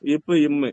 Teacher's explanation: ரெண்டுமே என்ன பண்ணும் ரெண்டு உதடு ஒட்டுமா ரெண்டு உதடு ஒட்டிக்கும்